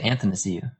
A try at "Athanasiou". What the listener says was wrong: You say anth? Put an N in between the A and the T.